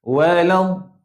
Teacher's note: Da macam nak sebut tuan-puan, gigit tepi lidah. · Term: huruf dad